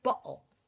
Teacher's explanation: It is kind of, if you notice, some British people don't, when they say the word bottle, they don't actually pronounce the T. They will swallow it, so it will sound like bottle. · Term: glottal stop